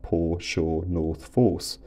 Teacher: poor and sure have totally merged into the North Force lexical set